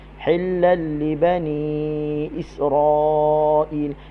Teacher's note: Okey, asalnya hillan li bani. Tanwin berjumpa dengan huruf lam dipanggil idgham. Idgham bila gunnah. Masukkan tanwin ke dalam lam tanpa dengun.